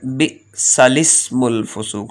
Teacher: لام ہی پڑھا جائے گا، الف نہیں پڑھے جائیں گے دونوں. بئسالسم لام زیر سین لس، اس طرح پڑھیں گے، الف نہیں پڑھا جائے گا.